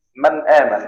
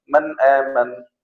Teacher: غنة لكنها ليست ظاهرة، هذا في جسمها فقط في الداخل، يعني ليست ظاهرة في الخارج. يعني إذا قلت من آمن هذا حكم إظهار، لكن لا أستطيع أن أقرأ بدون غنة هنا.